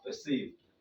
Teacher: we pronounce the ER here as a schwa. You see, the ER that we pronounce as here, we now pronounce it as the schwa, perceive.